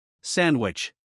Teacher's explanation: you notice that you don't hear a strong D sound sandwich here the letter D is between n and W so it can be dropped · In fast speech, many native English speakers drop the D sound when it comes between two other consonant sounds, because pronouncing D in this position can be a bit difficult. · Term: drop D sound, dropped D sound